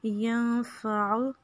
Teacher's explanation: یہاں پہ اخفا کریں گے نون پہ اور عین کو کھینچنا نہیں ہے. ینفعو اس طرح سے آپ نہیں پڑھیں گے.